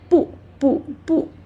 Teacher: But when bu is alone, yeah, it's quite uh special. It is falling tone. Yeah, but when together with uh some other tones, it change to a rising tone.